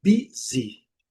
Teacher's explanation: A primeira sílaba é forte, mas o I também é muito bem pronunciado. Letra Y ao final, sempre muito bem pronunciada com som de I.